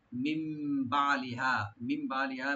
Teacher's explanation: নুন সাকিনের পরে যেহেতু বার সেখানে একলাপ হবে, মানে নুন সাকিনটা মিমের সাথে চেঞ্জ হয়ে গুণ সহকারে পড়া হবে। মিম বালিহা, বালিহা, বা ওপেন রাখবেন, আইনটাকে রাইট দিবেন।